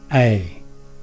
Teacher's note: being a long vowel the sound is also held for twice the length of time as a short vowel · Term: compound vowel